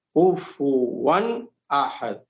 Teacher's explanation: جب تنوین کے بعد حمزہ آ جاتا ہے تو وہاں غنہ نہیں کرتے ہیں، جلدی پڑھتے ہیں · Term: اظہار کا قاعدہ